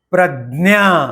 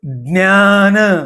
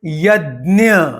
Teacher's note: उसका उच्चारण द, न और य, इन 3 व्यंजनों से मिलकर हुआ है